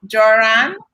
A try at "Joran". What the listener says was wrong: Hey, but it's pronounced with a Y.